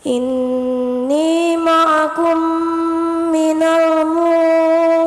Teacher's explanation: Idgham mitsli adalah mim sukun bertemu dengan huruf mim maka dibaca melebur dan mendengung.